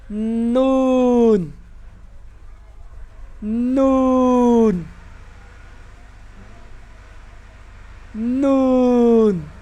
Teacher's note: गौर करें मेरे हंठ गोल तो नहीं हो रहे।